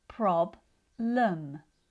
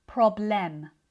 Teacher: The first syllable is stronger and the second syllable is weaker. That's because the stress is at the start of the word, problem. When the stress is at the start of the word, this means that the second syllable is usually reduced, which means the E isn't fully pronounced.